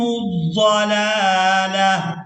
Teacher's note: اس تا کو ہم نے وقف کی صورت میں تا ادا نہیں کرنا، بلکہ اس کو ہم نے ہا کے اندر بدلنا ہے اور اس کو ساکن ادا کرنا ہے، ساکن یعنی اس کے اوپر جزم آ جائے گی، تو یہاں اس ہا کو ادا کریں گے، تا کو ادا نہیں کریں گے۔ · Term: ہا ساکن